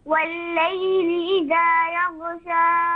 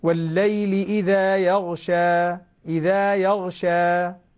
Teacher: حركتين، لماذا تمدين زيادة يا بنتي؟